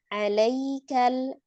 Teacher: Lam sukunnya hati-hati tidak dipantulkan, tidak qalqalah